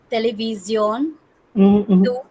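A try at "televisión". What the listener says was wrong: टेली आप English में बोल रहे हो, ऐसे television, no, it's not tele, it's television.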